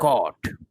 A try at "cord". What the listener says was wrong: Yes.